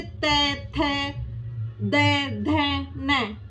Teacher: दंत्य जीभ दांतों के पिछले भाग को छूती है, वो दंत्य व्यंजन हो जाते हैं।